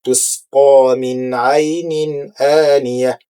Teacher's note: sin juga merupakan huruf ar-rikhawah, yaitu huruf yang mengalir suara